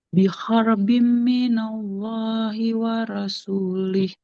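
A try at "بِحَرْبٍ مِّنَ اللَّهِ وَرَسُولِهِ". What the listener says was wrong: Waro, huruf ro-nya jangan jadi ra ya. Wal rasulih.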